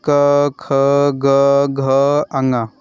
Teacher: क वर्ग का उच्चारण स्थान कंठ होता है।